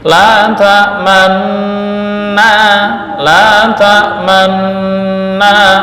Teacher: Nah, supaya harokat nun yang berharokat dhammah itu kelihatan dan digabung, karena ada dua nun maka diidghamkan. Maka cara membacanya adalah dengan memonyongkan, bukan membaca dhammah, bukan la ta'manuna, enggak, tapi la ta'manna, la ta'manna. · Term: ismam bil isyarah